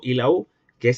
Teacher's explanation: la o y la u son timbres labializados, es decir, los labios se abocinan o se redondean